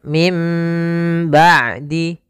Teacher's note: nun sukun bertemu dengan ba maka ini kita namakan dengan iqlab iqlab yaitu membalikkan suara Nun menjadi suara mim